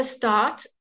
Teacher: the R actually changes the A, but you don't pronounce the R